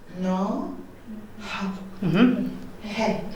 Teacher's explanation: What happens with Irish is we're going to put a soft H in front of I and O, just for the pronunciation.